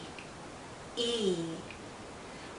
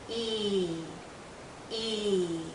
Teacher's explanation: Our lips are very spread, very pulled out, and this is a long vowel sound. So think of your lips being pulled out like the vowel sound is being pulled out because it's a long sound.